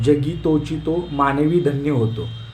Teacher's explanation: ध जरी आपल्याला दिसताना ऱ्हस्व दिसत असलं तरी धन्य याच्यामध्ये उच्चार करताना ध मध्ये काय आहे बघा, त्याचा उच्चार लांबट होतो, दीर्घ होतो. त्यामुळे याला काय म्हणणार आपण, गुरु म्हणतो, लक्षात ठेवा.